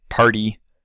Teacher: In a word like party its flapped. It might even sound a little more like a D to you.